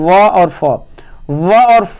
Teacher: दंतों निचले होठ और ऊपर के दांतों से व और फ बोलते हैं। तो आपका दांत और ओठ, नीचे वाला ओठ दोनों सटता है।